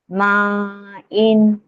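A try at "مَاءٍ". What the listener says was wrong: ఇంకా దీర్ఘం తీయాలి.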